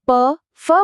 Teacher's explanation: પ, ફ બોલતી વખતે બસ હોઠ એકબીજાને સ્પર્શે છે, એટલે એ છે ઓષ્ઠ્ય.